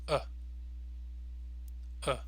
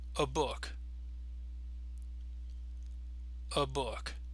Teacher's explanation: Now the schwa has a very, very short, very relaxed sound. So it's going to sound like this.